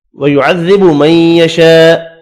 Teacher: بڑی مد کو 5 الف کی مقدار میں کھینچ کر پڑھنا ہے